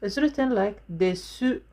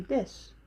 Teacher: is written like desu, but we don't say desu, we say des.